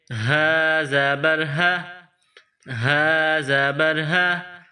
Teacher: منہ سے ہوا نکالنے کی طرح اس ہا کو پڑھتے ہیں۔ ہا کے اوپر زبر ہے، ہا زبر ہا، ہا زبر ہا، الہا، الہا۔ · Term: چشمے والی ہا